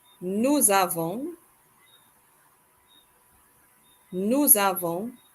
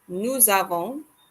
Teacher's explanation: Notice we link the S from nous to the A from avons. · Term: liaison